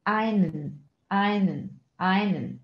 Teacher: Das E wird wieder verschluckt und wir sagen einen, einen, einen.